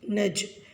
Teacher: جیم ساکن ہے، وہاں پر قلقلہ ہوگا. قلقلہ مین آواز کا ٹکرانا، جنبش سے پڑھنا، جیسا کہ نج.